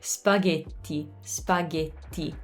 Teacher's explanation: Notice how the vowels are very tense, very tight